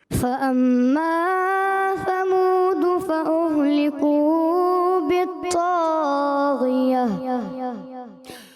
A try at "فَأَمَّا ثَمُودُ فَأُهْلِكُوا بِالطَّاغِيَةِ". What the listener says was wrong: مگر مد اصلی کو کم کرنا ہے. مد اصلی کو ایک الف سے